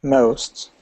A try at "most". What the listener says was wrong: Yeah, that was quite a full most. You know, that's really sounded quite like a full most, but you don't have to go all the way.